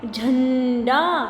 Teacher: जब आप बोलते हैं झन तो देखिए आपके नाक से भी ध्वनि सुनाई देती है। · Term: अनुस्वार